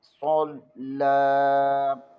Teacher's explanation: صاد زبر کو لام کے ساتھ ملائیں گے، لام کو باریک پڑھیں گے اور لام کے اوپر کھڑی زبر بھی ہے، اسے بھی ایک الف کے برابر کھینچیں گے